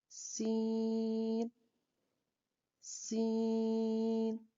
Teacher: سین 3 حرفی حروف میں سے ہے اور سٹی والا ہے اور باریک حرف ہے۔ سین کو ادا کرنے کے لیے زبان کی نوک کو اوپر نیچے کے دو یعنی کہ سامنے کے 4 دانتوں کے کناروں سے مضبوطی سے لگاتے ہوئے باریک اور سٹی کی سی آواز میں سین سین۔